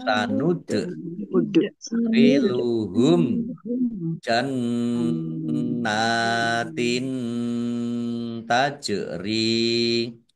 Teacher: nun tasdid dibaca gunnah atau mendengung ditahan kira-kira dua harokat agar tampak dengungannya · mim sukun bertemu dengan huruf jim bacaan izhar syafawi dibaca jelas